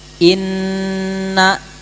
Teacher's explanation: Tapi cara pelafalannya atau cara bunyinya itu di dalam hidung. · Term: nun bertasdid